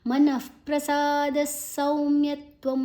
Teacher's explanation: ದಾದ ನಂತರ ವಿಸರ್ಗದ ಉಚ್ಚಾರಣೆ ಸ್, ಮುಂದಿನ ಅಕ್ಷರ ಸಾ ಇದೆ. ಸೌ ದೀರ್ಘಾಕ್ಷರ.